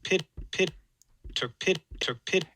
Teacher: k is a velar closure it's further back in your mouth and then you close your p then your bilabial closure in front of it so it kind of swallows up the any stop release burst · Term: no audible release